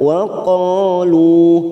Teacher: Qa fathah diikuti alif. Lu dhamma bertemu sukun 2 harokat kita panjangkan